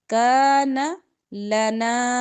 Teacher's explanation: یقولون لو کان، کاف زبر الف کا، کاف زبر الف کا، الف مدہ ہے اور نون پر زبر لمبا نہیں کریں گے ، کان لنا، نون پر زبر کے ساتھ الف ہے لمبا،